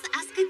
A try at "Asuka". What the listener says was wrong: Don't hold the last part. Very good.